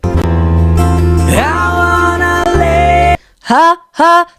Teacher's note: There's a little bit of an aspirate, abrupt aspirate. It's not like longed out.